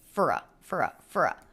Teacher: it's almost like we don't have a vowel here it's the F sound and then the schwa R sound and our absorbs the schwa so they're just one sound frou